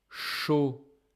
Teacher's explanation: it contains the sound sh of chaud and the sound s like sur